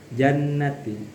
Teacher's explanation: Jannati itu juga ada 2 hukum, gunnah sama mad asli. Gunnah di situ karena ada nun, huruf nun yang ditasdid. Jadi membacanya harus didengungkan. Dan mad asli di sini karena ada huruf ya yang dikasroh.